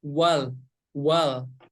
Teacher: huruf lam tidak termasuk ke dalam huruf Qalqalah jadi cara membacanya Jangan dipantulkan · Jangan dipantulkan huruf lam ini memiliki sifat tawasut atau bainiyah jadi ketika membaca huruf lam yang berharakat sukun harus dialiri sedikit